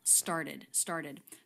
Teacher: a t becomes a flap t when it comes after an r before a vowel